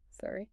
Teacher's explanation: The rising tone is what signals the information gap and invites the speaker to fill it. · Try just the single word. Make sure your voice rises at the end so it signals a question. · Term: upward tone